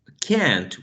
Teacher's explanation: in general American they would say can't with a trap